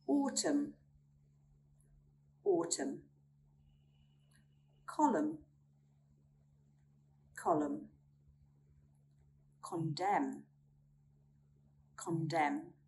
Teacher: We do not sound out the letter N when it comes after an M at the end of a word.